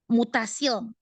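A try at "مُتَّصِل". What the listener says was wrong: Double. muttasil.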